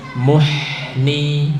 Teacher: Ini haknya mengalirnya tidak sempurna. Muhni, karena bukan huruf syiddah, huruf rokhwah.